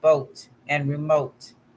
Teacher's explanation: the long o is a close mid rounded vowel and creates a sound heard and vote and remote the letter